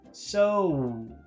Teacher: It's a very long, very big sound. It's two sounds. It's O, oo.